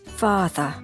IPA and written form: ˈfɑː.ðər (father)